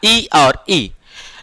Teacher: जब ई बोलते हैं हम लोग, ई तो तालु से बोला जाता है, जीभ तालु, देखिए तालु, ई और ई। जब ई और ई बोलते हैं तो ये दोनों स्वर जो है तालु से बोला जाता है